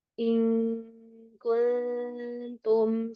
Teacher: Pangalidah belum naik. seperti mau ngucapin huruf kaf nanti suara akan tertahan di pangkal lidah · Nah, jadi enggak turun terus rahangnya. Ing langsung habis rahang turun kita langsung menuju huruf kaf